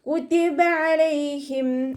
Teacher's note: അനിൻ്റെ സൗണ്ടിന് തൊണ്ടയുടെ മധ്യഭാഗത്തുനിന്ന് കൊണ്ടുവരിക, ഹംസയുടെ സൗണ്ടായി പോവാതെ നോക്കുക